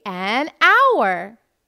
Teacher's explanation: H is a consonant. But when we say hour, we notice that it starts with a vowel sound of A and not with the sound of H